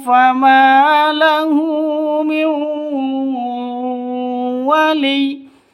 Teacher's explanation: nun mati bertemu dengan wau cara bacanya masuk ke wau disertai dengung dua ketukan